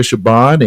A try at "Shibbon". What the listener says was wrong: Shibbon with a V. spelled with a B, but it's pronounced with a V.